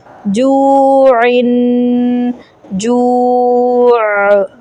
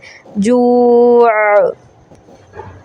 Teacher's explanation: عین ہے نا تو اس کی آواز حمزہ سے نہیں ملانی، سافٹ آواز ہے